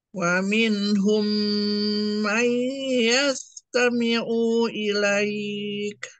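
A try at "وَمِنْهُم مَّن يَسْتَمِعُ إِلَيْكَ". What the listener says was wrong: Aunya jangan panjang-panjang.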